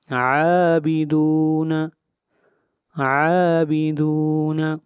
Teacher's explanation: عین کے اوپر کھڑی زبر ہے اور کھڑی زبر کو 1 الف کے برابر لمبا کرتے ہیں